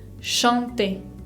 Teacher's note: Ven que acá tenemos una nasal, A con N, chanter. Bien, tienen que sentir que el aire sale por la nariz.